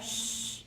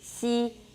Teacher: Your tongue has to go up there. You're smiling, and your tongue goes way up there. Xi gets really close to the palate.